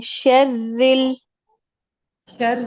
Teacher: را کو موٹا نہیں کریں